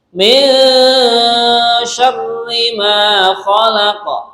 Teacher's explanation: contoh bacaan mendengung nun sukun berjumpa dengan syin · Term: ikhfa